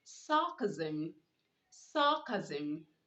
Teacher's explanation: you are to pronounce the s making the z sound